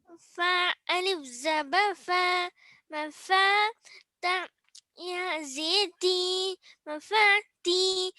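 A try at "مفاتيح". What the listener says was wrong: मफाती लंबा कीजिए।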